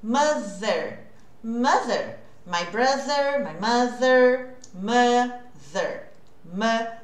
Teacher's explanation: eu vou fazer esse som que parece o Z, só que é entre os dentes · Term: TH com voice